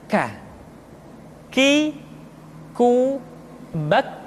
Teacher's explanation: huruf K diucapkan dengan mengangkat pangkal lidah kita ke posisi di depan huruf Qaf. K diucapkan dengan mengalirkan nafas kita.